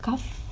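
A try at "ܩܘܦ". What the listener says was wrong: Kop. Il n'y a pas de F en oriental. Kop.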